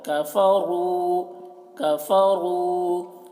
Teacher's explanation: کفروا کاف کو باریک، را کو موٹا کر کے